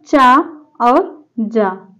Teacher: चा और जा तालव्य है